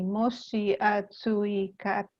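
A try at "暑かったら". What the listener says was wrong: So not atsuikatara, just atsukatara.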